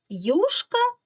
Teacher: слово юшка ми чітко чуємо що буква ю позначає два звуки й у